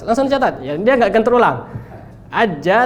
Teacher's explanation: Tengah lidah bertemu dengan langit-langit atas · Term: huruf Jim